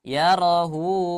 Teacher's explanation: Bukan ro-nya yang panjang tapi hu-nya.